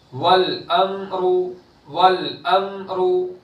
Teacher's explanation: लाम की आवाज भी टकरा कर नहीं आनी चाहिए और मीम की भी टकरा कर नहीं आएगी, जुम्बिश के साथ वापस नहीं आएगी। और रॉ पर पेश है तो रॉ को पूर करेंगे। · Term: इजहार शफी